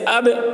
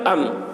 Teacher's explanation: با ساکن پڑھنے کے وقت دونوں لب مل کر سختی کے ساتھ علیحدہ ہوں، اگر دونوں لب علیحدہ نہ ہوں تو با کا قلقلہ ادا نہ ہوگا، بخلاف میم ساکن کے، کیونکہ اس میں قلقلہ نہیں ہے، حالانکہ دونوں حرف لبوں سے نکلتے ہیں، جیسے اب ام۔